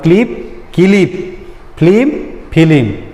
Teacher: মাঝখানে আমার ই ধ্বনি এসেছে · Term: মধ্য স্বরগম